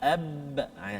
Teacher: makhraj dua bibir dalam keadaan tertutup macam ni dua huruf mim dan juga ba.